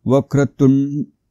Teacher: आता व वर थोडासा आघात येईल कारण हा जोडाक्षर आहे इथे हे जोडाक्षर आहे वक्रतुंड पुन्हा इथे जोडाक्षर आहे त वर